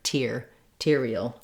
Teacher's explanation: I do use a T like at the start of words with a puff of air, arterial. It's just like the word, this word tier, as in layers or levels, or this word tear, like a tear that drops from your eye. · when we change to arterial, we have actually a real T because this syllable tier is stressed. And so in that case, instead of being more like a D sound, I do use a T like at the start of words with a puff of air, arterial.